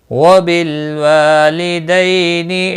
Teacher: دئی یا لین ہے، تھوڑا نرمی کے ساتھ کھینچ کر پڑھیں گے